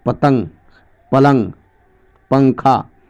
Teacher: نون غنہ اس نون کو کہتے ہیں جو ناک میں چھپا کر پڑھی جاتی ہے